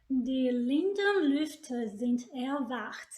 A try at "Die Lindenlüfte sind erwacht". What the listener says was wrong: Die Linden, now make sure you lean on die Lindenlüfte, Lüfte, a little bit longer.